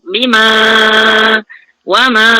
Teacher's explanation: Kemudian wamak tadi pada bima ma tu okey, dia 4 hingga 5 harakat bertemu mad munfasil. Ma tu asalnya 2 kan, sebab dia bertemu dengan hamzah dalam perkataan yang berlainan, huruf yang tercerai, so dia baca dengan 4 hingga 5 lah.